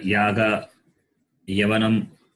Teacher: Ya is palate. The word, the letter ya is palate, palatal. The sound comes from the palate.